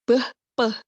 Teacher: Pertama kayak beh, peh, itu kan kita menggunakan bibir yang di depan, yang mana disebut sebagai bilabial